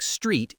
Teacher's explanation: in a word like street, it's next to other consonants, so it stays a hard T.